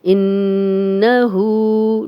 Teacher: انہو نون پہ شد ہے تو غنہ کریں گے